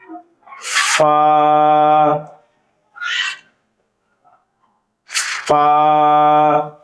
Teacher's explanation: নিচের ঠোঁটের পেট সামনের উপরের দুই দাঁতের আগার সঙ্গে লাগিয়ে নিচের ঠোঁটের পেট সামনের উপরের দুই দাঁতের আগার সঙ্গে লাগিয়ে ফ, ফা, আমি আবার বলতেছি, খেয়াল করেন, ফা, ফা।